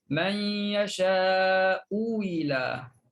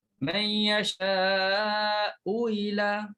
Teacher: Yang pertama ialah tukarkan hamzah. Ibdalkan hamzah kepada waw. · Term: wajah ibdal